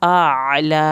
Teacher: الف اور عین کو علیحدہ علیحدہ پڑھنا ہے